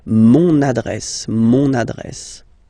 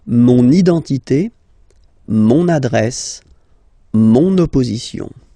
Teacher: you can hear now this little link, so you've got to pronounce this N